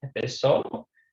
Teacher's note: So one of those rules is that whenever you come across a letter or a word that has the letter Z in it, it's always pronounced with an S sound, unlike English where it's pronounced with a Z sound